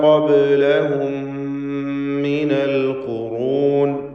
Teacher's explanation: തടിപ്പിച്ച് സ്വരഭാരത്തോടെ ഖാഫിനെ ഉച്ചരിക്കണം. · പദത്തിൻ്റെ അന്ത്യത്തിൽ വന്ന സാക്കിനത്ത മീമിന് ശേഷമുള്ള മീമിൽ പൂർണ്ണമായും ലയിപ്പിച്ച് മണിച്ചുകൊണ്ട് ഉച്ചരിക്കുക. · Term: തഫ്ഖീം, ഇദ്ഗാം ഷഫവി